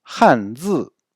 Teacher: Deux fois au ton descendant, il faut bien prononcer les deux tons.